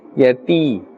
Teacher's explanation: First, the ya sakin, yati. Ya sakin is present with a kasra before it, and therefore we are pulling a little up to the extent of one alif.